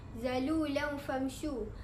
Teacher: Tanwin bertemu dengan huruf fa. Cara membacanya adalah disembunyikan tanwin tersebut dan perlu didengungkan. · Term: ikhfa hakiki